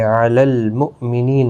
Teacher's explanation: حمزہ ساکن کو جھٹکے کے ساتھ پڑھیں گے